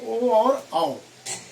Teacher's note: कुछ ऐसे स्वर है जो गले और होंठ दोनों का सहारा लेते हैं,